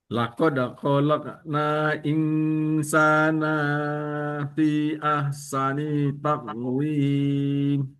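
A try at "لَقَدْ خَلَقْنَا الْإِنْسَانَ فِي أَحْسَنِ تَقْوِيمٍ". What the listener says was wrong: Khalaqanal nal nal masuk ke lamnya khalaqanal.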